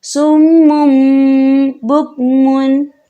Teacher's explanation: تھوڑا سا غنہ کریں گے اور غنے کی مقدار 2 سے 3 سیکنڈ ہوگی